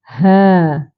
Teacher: Ha makhrajnya di pangkal kerongkong. Tekan suara di pangkal kerongkong. Ha. Kita boleh rasa getaran di pangkal kerongkong itulah. Ha.